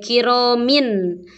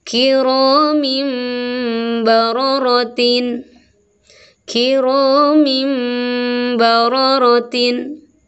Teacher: dibacanya yeuh baunya iambali kemudian ini ada tanwin ketemu Mba maka bunyi tanwinnya diganti menjadi Bunyi mim